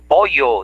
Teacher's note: Como en Lima, que no pueden pronunciar la doble L, ¿sí? Y ahí hay un barbarismo que se llama yeísmo